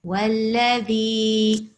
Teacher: no need to make وَالَّذِي too long. It shouldn't be longer than, a couple of beats.